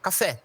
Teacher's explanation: Eh, e a última é uma oxítona. É a sílaba tônica está na última posição